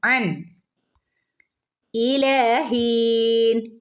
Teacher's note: നീട്ടി കൊടുക്കുക ട്ടോ മത്താ അൻ രണ്ട് ഫത്ഹ ഒരുമിച്ചാണ് വന്നിട്ടുള്ളത് അപ്പൊ നമ്മൾ അവിടെ വ്യക്തമായിട്ട് അൻ എന്ന് ഓതണം നൂന്റെ ശബ്ദം അങ്ങോട്ട് വരണം